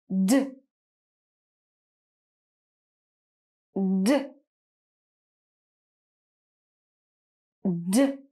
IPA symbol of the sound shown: d